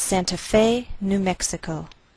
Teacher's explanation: We place the most stress on fe. That's our primary stress.